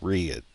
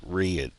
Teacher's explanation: But a lot of times, if I'm not paying attention, I'll say red, and it turns into 2 syllables. There's a Y even in it